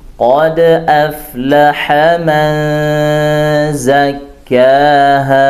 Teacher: huruf qaf ditebalkan, qad, tapi dia isti'la' dan dia infitah, tidak itbaq, jadi bukan o tapi qa, ya dia buka.